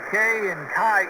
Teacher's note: Your vocal cords are not moving. It's a noise you make with your tongue in the roof of your mouth.